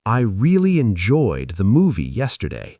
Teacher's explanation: Stress on really and enjoyed, softer on the and yesterday.